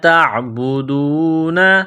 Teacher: تا کو باریک کرنا ہے، عین کے ساتھ ملانا ہے